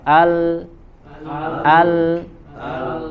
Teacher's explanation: posisi makhrajnya tertutup karena lidah menempel ke gusi tapi suara bisa keluar dari celah di sampingnya ya, ada celah di samping mulutnya, di samping lidah, sehingga suara keluar dari sampingnya ya. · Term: huruf lam